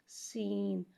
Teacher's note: سین کو ایک الف یعنی 3 مقدار کھینچ کے پڑھتے ہیں. سین میں سیٹی کی آواز کو ظاہر کر کے پڑھیں گے. سین. نون پا سین.